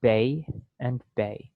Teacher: in the mouth while the vowel is being produced and so it starts out with your mouth a little more open and ends with your mouth being a little more closed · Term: diphthong